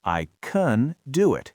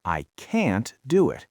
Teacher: the positive form uses a short, quiet schwa. I can do it. and the negative form uses a strong, wide vowel.